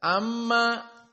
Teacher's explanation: Amma mim musyaddadah maka wujubul gunah dua harakat